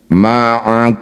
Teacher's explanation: Mim sukun bertemunya bukan dengan mim atau ba, disebut bacaan namanya idhar syafawi. Bunyi mim baca dengan jelas, rapatkan bibir dulu, tidak usah dengung, baru kemudian pindah ke huruf berikutnya. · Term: izhar syafawi